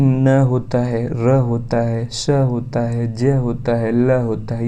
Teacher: ऐसे व्यंजन होते हैं जिनको उच्चारित करने के लिए जिह्वा को ऊपर वत्सर्य कटक से छुआ जाता है। ठीक है, उसको क्या कहते हैं, वश्चर्य ध्वनि कहते हैं। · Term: वत्सर्य ध्वनि